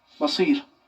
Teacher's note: حرف صاد میں تفخیم پائی جاتی ہے، اس کو ہمیں استعلا کے ساتھ پڑھنا ہے، بھاری آواز کے ساتھ پڑھنا ہے. لیکن حرف با کے اندر حرف بے میں یہ خصوصیت نہیں ہے، ہمیں حرف با کو بھاری آواز سے نہیں پڑھنا ہے، اس کا ہمیں خیال رکھنا ہے.